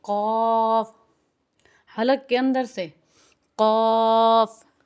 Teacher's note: اسے موٹا کر کے کھینچ کر ادا کرنا چاہیے. قاف حلق کے اندر سے